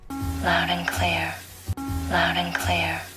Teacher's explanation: we don't pronounce letter D we just say loud and clear